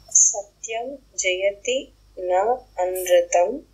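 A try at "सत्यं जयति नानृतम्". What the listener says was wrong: Again, you are putting more, it has to be more soft. It should not be with so much friction.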